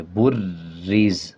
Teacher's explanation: اب را پہ شد ہے، را کو پچھلے الفاظ کے ساتھ ملا کے پڑھیں گے اور را پہ مضبوطی کے ساتھ پڑھیں گے